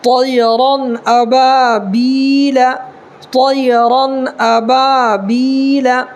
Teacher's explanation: را پر دو زبر ہے، را کو پر کر کے پڑھیں گے